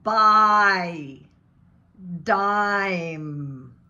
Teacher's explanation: Tensing the back of the tongue, upper back, the sound begins with ah and moves to e, ah, e. And the tongue actually is going ah, e, kind of like that in the throat. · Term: diphthong